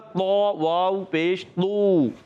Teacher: बाज़ बच्चे इसको पढ़ते हैं थो वाव पेश थू, ऐसे पढ़ते थू, ये गलत है। ये तो में थू की आवाज़ नहीं आती